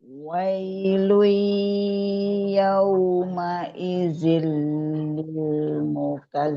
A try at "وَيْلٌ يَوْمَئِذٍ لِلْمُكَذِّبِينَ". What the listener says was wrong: Hati-hati ada Z-nya. Udah lidah keluar sedikit. Nah, ada Z-nya. Mukazi. Azzi.